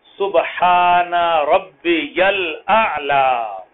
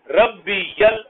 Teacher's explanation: با کی تشدید پڑھیں، یا کے اوپر اپنی طرف سے تشدید مت لگائیں